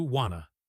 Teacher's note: This is a classic weak form combination. Want to almost never remains two separate words in speech. It becomes wanna.